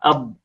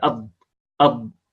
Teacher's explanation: هي الضاد التي ينطقها أهل مصر الآن، هم ينطقونها دالا مفخمة، دالا مفخمة، أض هكذا، أض أض، فهذه هي الضاد الضعيفة.